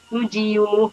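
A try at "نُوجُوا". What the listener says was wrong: Bukan. Dikit lagi. Semula nujiu, ya dibuang. Tadi kudiu menjadi kudiu, lalu menjadi kudu.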